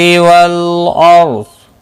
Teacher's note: لام ساکن کو ہلانا نہیں اور را ساکن سے پہلے زبر ہے اس لیے پر پڑھا جائے گا۔ ضاد مستعلیہ ہے، پر پڑھا جائے گا، وقف کی صورت میں ساکن ہوگا اور ملانے کی صورت میں اپنی حرکت کے ساتھ پڑھا جائے گا۔